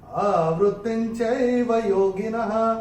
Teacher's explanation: दूसरे चरण में ये त के ऊपर अनुस्वार के बाद का अक्षर है च, और अनुस्वार के बाद जब च आएगा तो अनुस्वार का उच्चारण होगा न